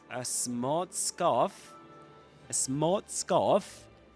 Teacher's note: You don't pronounce the letter R. Neither in smart nor in scarf.